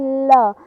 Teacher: वे वर्ड जिनके उच्चारण में जीवा मसूड़ों को छूती है और हवा का प्रमुख वेग जीवा के आसपास या अगल बगल से निकल जाता है, पार्श्विक वर्ड कहलाते हैं। · आप बोलकर देखिए ल, तो जीभ ऊपर मतलब ऊपर मुड़ गई, और जो हवा का वेग था वो जीभ के दोनों तरफ साइड से निकल गया। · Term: पार्श्विक व्यंजन